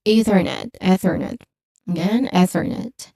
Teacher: There's a soft, unvoiced TH sound here.